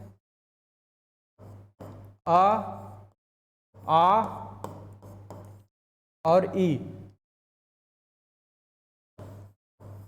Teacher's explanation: निर्नुनासिक में नाक से हवा नहीं निकल रही है, मौखिक में सिर्फ मुंह से हवा निकल रही है।